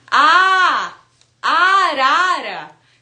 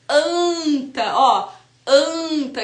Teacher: eu tenho uma vogal aberta ah Diferente de quando eu falo anta ó anta que é o som da vogal nasal